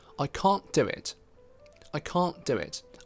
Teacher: i didn't pronounce that t i said i can't do it instead of i can't do